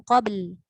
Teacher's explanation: qabl tu dia ada huruf ba, qalqalah, bunyikan ba, lepas tu bunyikan lam